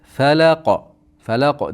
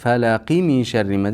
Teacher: Falaqo deganmizda qofga to'xtaganligimiz uchun qalqala bo'ladi. Falaqo. Ammo bog'lab o'tib ketsak qalqala bo'lmaydi.